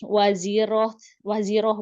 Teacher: ketika tamar butoh waqaf, maka ta berganti menjadi huruf H